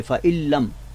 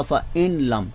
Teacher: लाम और रा का जब हम इदगाम करते हैं तो उसमें हम गुन्ना नहीं करते, गुन्ना के बग़ैर करते हैं